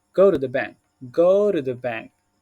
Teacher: see we can say go to as go do this now you can take the T as a D sound